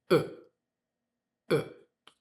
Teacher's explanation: Americans change the vowel sound in unstressed syllables of words to uh uh you can see my lips barely open.